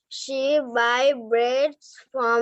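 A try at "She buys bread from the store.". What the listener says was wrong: buys। আচ্ছা তোমরা কিন্তু অনেকে এস টা উচ্চারণ করছো না। তোমরা রিডস বলছো না, তোমরা বলছো রিড। বাইস বলছো না, বলছো বাই। ভার্ব গুলো তো বলতে হবে।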